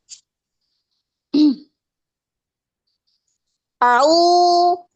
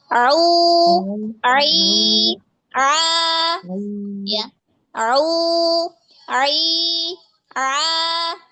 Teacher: pada ain dia di wasatul halq, ya, di tengah tenggorokan.